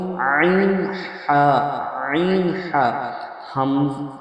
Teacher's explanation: হালাক বা কণ্ঠনালীর মাঝখান হইতে উচ্চারণ হয় আইন হা।